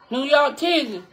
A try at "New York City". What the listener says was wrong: New York City? You said New York titty? What New York titty mean? New York titty. You said New York titty. Not New York titty, New York City. With the C, like almost a shirker. But it ain't a shirker. Ain't a shirker. It's almost a shirker, but it's the shirker that don't close. Because it's a C.